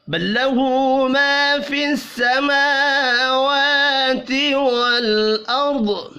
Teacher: میم اور واو کھڑی زبر کی وجہ سے 1 الف کے برابر کھینچ کر پڑھے جائیں گے. را اور ضاد بھی پر پڑھے جائیں گے. را اس لیے کیونکہ را ساکن سے پچھلے حرف کے اوپر زبر ہے. وقف کی صورت میں ضاد ساکن ہو جائے گا. · ہا کے اوپر الٹا پیش ہے, 1 الف کے برابر کھینچ کر پڑھیں گے